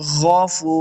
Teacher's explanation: ان اللہ غفور الرحیم. غفو غین حروف مستعلیہ سے اس کو موٹا کرنا ہے. غفو فا پیش واو فو، واو مد ہے، اس کو 2 حرکات لمبا کریں گے.